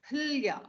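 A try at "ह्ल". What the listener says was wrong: No. Hla. Hla. Don't make the akara after the hakara. Hla.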